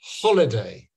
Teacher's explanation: of the syllables do you hit do you stress so so if you're saying holiday you stress the first one